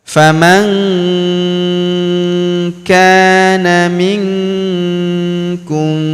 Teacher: Huruf nun sukun bertemu huruf ku maka nun sukunnya melebur ke huruf ku kita baca dengung dan samar. Dengungnya kita tahan dua sampai 3 harakat.